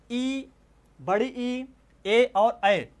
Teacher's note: तो कहने का भाव ये है कि अग्र भाग से जीभ के जो अग्र जीभ की नोक जो होती है वहाँ से जिन स्वरों का उच्चारण होता है उसे हम बोलते हैं अग्रस्वर।